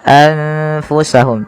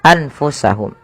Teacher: maka nunnya disamarkan kepada huruf fa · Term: ikhfa